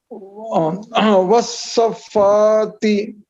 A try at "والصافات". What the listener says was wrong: والصافات، اس میں بھی دیکھیے حرف مد ہے یعنی کھڑا زبر ہے، کھڑا زبر کے بعد دیکھیے یہاں تشدید آ رہا ہے، تو اس وجہ سے مد لازم ہو رہا ہے.